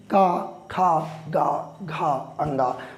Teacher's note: जैसे मैंने इसमें का वर्ग, चा वर्ग, टा वर्ग, ता वर्ग, पा वर्ग में बताया था कि जब हम उच्चारित करते हैं का, खा, गा, घा, अंगा, तो क्रमशः जो आवाज़ निकलती है वो हमारे कंठ से निकलती है।